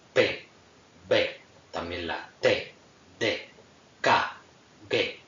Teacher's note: Fonemas oclusivos, tenemos pues la P, la B, son fonemas que a la hora de articularlos se produce como una oclusión, como su nombre indica, como un cerrazón de algún órgano fonador, se cierra totalmente para a continuación, en una suerte de explosión, dejar pasar el aire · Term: oclusivas